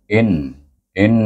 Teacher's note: Hamzah bertemu dengan Nun dibaca bunyi in in dengan dengung wajibul gunah dua harakat